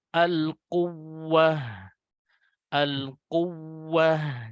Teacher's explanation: Jadi agak ada penekanan di huruf wawu yang bertasydid atau ya yang bertasydid. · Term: an-nabr